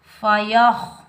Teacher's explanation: ख़ा और रा ये दोनों हरूफ़ मुस्तअला में से आ रहे हैं तो इनको हम मोटा पढ़ेंगे। ख़ा की आवाज़ खुरदरी होती है